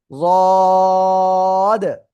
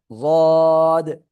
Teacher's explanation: জিহ্বার গোড়া, গোড়ার কিনারা উপরে মাড়ির দাঁতের সাথে মুখ বন্ধ রাখেন, দেখেন অটোমেটিক লেগে আছে।